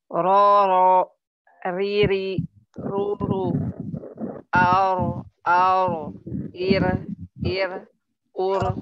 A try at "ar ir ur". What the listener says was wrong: Ya, jangan terlalu ditarik ya, jadi ura jadinya. Ur. Kalau ditarik banget, udah ura. Ya, jadi ada suara e-nya. Pecah suaranya.